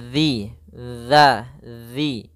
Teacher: ujung lidah kita menempel dengan gigi seri atas dan dia apa namanya eh kalau bisa sedikit tergigit gitu ya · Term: zal